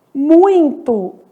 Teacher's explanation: muito, que é um ditongo que nasaliza esse i